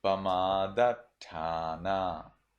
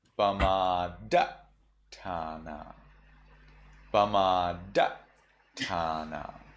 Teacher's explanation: In Burmese, instead of getting stuck at T, you cut off the sound.